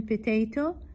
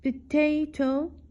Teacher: the middle syllable is stressed in potato